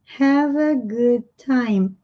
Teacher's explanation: Have, aqui termina com som de V, vai automaticamente emendar com o som do A.